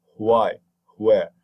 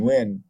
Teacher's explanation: the w is produced with air coming out to make a friction, then it is the upside down w. Otherwise, the plain w, as in win, is just a regular w.